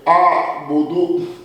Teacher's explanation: حمزہ کو انتہائی حلق سے ادا کیا گیا اور عین کو وسط حلق سے